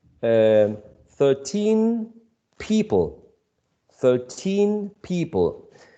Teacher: You take the stress from 13, which goes at the end, and you place it at the beginning. So instead of saying 13, you say 13. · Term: stress shift